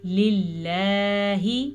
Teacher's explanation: لفظ اللہ کو باریک پڑھنا ہے کیونکہ لفظ اللہ سے پیچھے زیر ہے